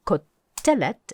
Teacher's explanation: the only new form is ko telet and you want to hear that accent on the middle syllable called telet make sure you can say that with the accent